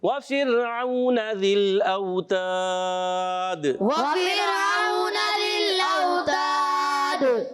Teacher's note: اوتاد میں بھی مد عارض ہو جائے گا اور دال میں قلقلہ بھی ہوگا